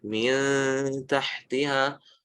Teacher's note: Poinnya adalah cara kerjanya hukum ikhfa ini adalah kita menempatkan ya huruf atau hukum ikhfa ini antara huruf nun, fiha di sini maksudnya nun, antara huruf nun dan huruf setelahnya. Jadi lidahnya ditempatkan di antara keduanya, tidak di nun, tidak juga di ta, tapi di antara keduanya, hanya mendekati tanpa menempelkan. Mil tahtiha, bukan min, ya.